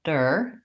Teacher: In the word quarter, the stress is on the first syllable, quar, and we hold that long. And the second syllable, der, is short and reduced